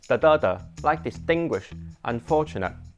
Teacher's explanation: it always sounds like the mid-high-low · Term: Cantonese accent